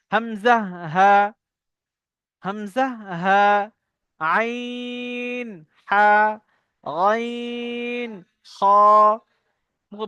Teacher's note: হুরুফে হালকি বলার কারণ এটাই, এই কটি অক্ষর এই গলার এই হাল, কণ্ঠনালী, কণ্ঠনালীর ভিতর থেকে উচ্চারণ হয়। এর ঠোঁটের কোনো কাজ নেই, সব সব গলা, এই শুরু থেকে নিয়ে শেষ পর্যন্ত, এই পর্যন্ত এর কাজ।